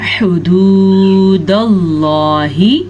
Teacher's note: لفظ اللہ کو پر پڑھیں گے کیونکہ لفظ اللہ سے پیچھے زبر ہے